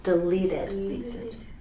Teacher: Because delete ends with that T, so we get the extra syllable: deleted. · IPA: /ɪd/